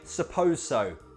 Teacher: Commonly we lose the I and we just say, suppose so. But in conversation we speak fast, so it sounds like, s'pose so.